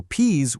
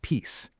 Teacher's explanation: For consonants, that buzzing Z sound often turned into a sharp S sound. So P's would sound more like peace.